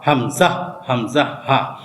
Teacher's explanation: এক নাম্বার মাখরাজ হলকের শুরু হতে হামজা হা